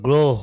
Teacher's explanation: এই রফলার আগে যে অ থাকে সেটাও কিন্তু কি হয়ে যাচ্ছে, ওকার হয়ে যাচ্ছে